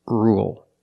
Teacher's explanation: With rule, we don't say rule. There's no Y. It's just R. Dark L.